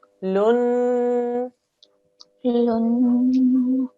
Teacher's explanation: It's a noon mushaddad, therefore 2-second nasal sound.